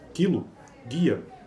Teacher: Quando estas são seguidas de vogal, quilo, guia, a propriedade de ser anterior da vogal i é compartilhada pela consoante precedente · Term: palatalização de consoantes velares